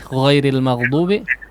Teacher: huruf ghain yang disukunkan dialirkan si udaranya, Pak ya. Jangan dicentungkan, dipantulkan mag, tidak begitu, tidak juga mati mag mati, tidak ya, tapi maghdubi.